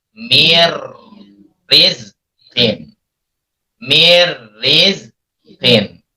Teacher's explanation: Awalnya min rizqin, karena secara hukum ketika nun sukun bertemu dengan ro harus dimasukkan. Nun sukunnya hilang, ro-nya ada tasdid. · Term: idgham